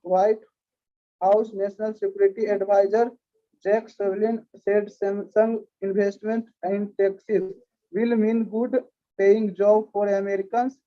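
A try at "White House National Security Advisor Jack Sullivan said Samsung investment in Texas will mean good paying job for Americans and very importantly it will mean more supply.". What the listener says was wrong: My friend, तुम्हारा voice modulation नहीं हो रहा है, मतलब एक ही टोन में तुम पढ़ते चले जा रहे हो। कुछ शब्द को जोर से बोलना होगा, कुछ शब्द को धीरे बोलना होगा, तब ना होगा।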